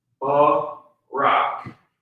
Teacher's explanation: The ra and the ka are connected so that that vowel sound drops off of the ka, and you're left with the consonantal value.